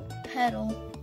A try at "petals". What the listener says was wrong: Petals. There's an S at the end. Petals.